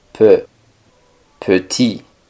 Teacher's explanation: La E no es tan abierta como una E en español P, sino un poco más cerrada.